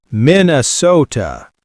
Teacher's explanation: Notice the long O, typical of Minnesotan speech.